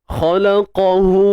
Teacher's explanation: Khalaqahu, hu dua harakat. Dia sama je kadar macam mak asli kan. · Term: maksilah qasirah